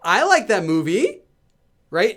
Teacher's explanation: So it's kind of like in English, ending a sentence with a question mark or a regular statement in English with a rising intonation. So you're making a statement, but you're ending your statement with a rising intonation, as if it's a question. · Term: up-speak, upspeak